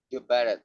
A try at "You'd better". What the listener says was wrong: say you better, it's not correct. It's gotta be you'd better.